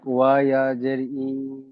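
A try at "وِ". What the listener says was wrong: জি, একটু একটু খেয়াল করবেন, ওয়াও ইয়াজের ভি, ই পড়বেন না। ওয়াও ইয়াজের ভি।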